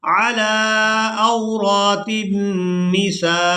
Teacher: جب ہم نے سین کو حمزہ ساکن کے ساتھ ملانا ہے تو جھٹکا سا محسوس ہوگا اس کو ادا کرتے ہوئے